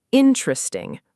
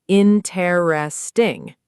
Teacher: Natively, it's often compressed to just three syllables, interesting, rather than four full syllables, interesting.